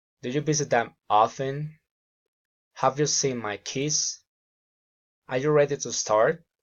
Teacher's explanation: General questions, rising intonation.